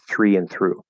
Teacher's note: with three and through the th r are exactly the same it's just th straight to an r consonant sir and then after in three you add an e three